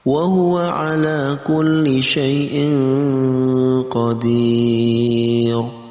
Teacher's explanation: Cara membacanya yaitu dengan disamarkan antara tanwin dan huruf qaf. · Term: ikhfa